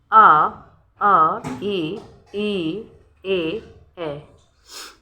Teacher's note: वे स्वर जिनका उच्चारण करते समय होठ गोल नहीं होते हैं अपितु फैल जाते हैं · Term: आवृत्ताकार